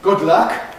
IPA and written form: ˌgʊd ˈlʌk (good luck)